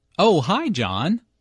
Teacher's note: Notice the rising intonation here. is excited to hear from John and is very pleased that he called her.